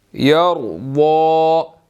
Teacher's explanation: را جو ہے وہ اس کو موٹا ادا کریں گے، اور ضاد کے اوپر جو ہے وہ کھڑی زبر ہے، اس کو ہم نے 1 سیکنڈ لمبا بھی کرنا ہے اور اس کو موٹا بھی ادا کرنا ہے۔